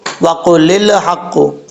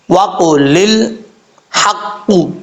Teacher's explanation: لام جو ساکن ہوتا ہے اس کو قلقلے سے آپ نے بچانا ہے، قلقلہ نہیں پڑھنا۔